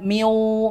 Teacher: Mi ini kan kita bacanya langsung masuk ke huruf wau makanya kita langsung monyongkan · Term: idgham naqis